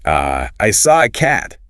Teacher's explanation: The article A in isolation is E, but in a sentence reduced, it's I saw a cat.